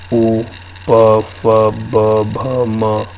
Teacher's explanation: है ना अब दोनों होठ मिलेंगे